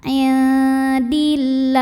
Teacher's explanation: Karena huruf sebelumnya barisnya kasrah, maka bacanya tipis lah. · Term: tarkik